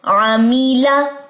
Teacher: یہاں پہ لام باریک پڑھا جائے گا، استفال کی صفت ہے